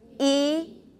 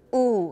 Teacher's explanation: e is front and u is back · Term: front versus back